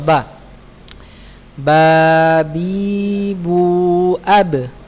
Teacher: Letak huruf ba itu ada di bibir ya. Bertemunya kedua bibir dalam keadaan tertutup.